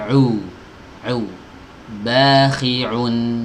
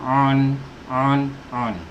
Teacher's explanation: ain keluar dari tenggorokan bagian tengah. Au. Jangan dari hidung, jangan tapi au. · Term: huruf ain